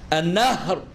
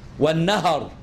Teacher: لغة باسكان الهاء ولغة بفتحها